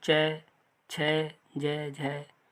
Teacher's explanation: आगे देखेंगे तालब व्यंजन जो होते हैं, जो तालब से बोले जाते हैं। तालब मतलब कहीं ना कहीं जीभ तालु पे जाके टच होती है